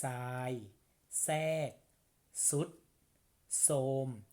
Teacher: ทอทหารเนี่ยมาควบกับรเรือและมันออกเป็นเสียงซอสู้ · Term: คำควบไม่แท้